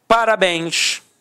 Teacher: Repare que a sílaba tônica é a última e é terminada em ens. Então, com isso, eu tenho acento por conta da regra da oxítona.